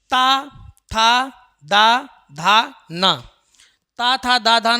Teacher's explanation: ये दांत की सहायता से बोले जाते हैं यह हमारे दंत व्यंजन हो गए कैसे व्यंजन हो गए दंत